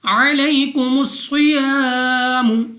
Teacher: الف سے پہلے زبر الف مدہ 2 سیکنڈ تک کھینچ کر لمبا کر کے پڑھنا ہے۔ · صاد مستعلیہ میں سے ہے موٹا پڑھیں گے۔